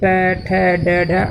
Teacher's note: मूर्धा मतलब मुंह के भीतर की ऊपरी छत का अगला भाग, इससे आपका ट ठ ड ढ अड़ा आता है।